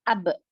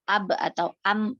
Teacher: huruf ba di situ kan keluar dari kedua bibir, asafatan. Nah, kedua bibir di sini ada pertemuan di situ kan, ada pertemuan dua huruf, dua organ pelafalan. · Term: mahrot muhaqqaq